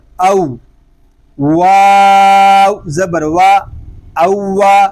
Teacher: واو پہ ہونٹ مکمل گول ہوں گے